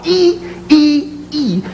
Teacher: a high tense front rounded vowel